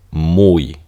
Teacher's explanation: piensen en una deslizada como una I que se pronuncia como una Y